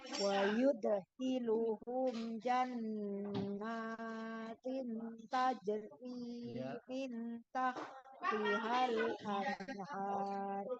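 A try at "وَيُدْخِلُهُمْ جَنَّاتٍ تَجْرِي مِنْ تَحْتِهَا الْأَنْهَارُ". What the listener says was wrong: Ya, ada jannatin, nun bertemu dengan ta, tanwin bertemu dengan ta, ifanya jangan bukan idhar.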